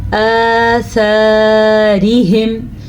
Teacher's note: آثارہم، اس کے جوڑ سن لیں، حمزہ کھڑی زبر آ، سا زبر الف سا، آثارہم، را کو باریک پڑھنا ہے کیونکہ را کے نیچے زیر ہے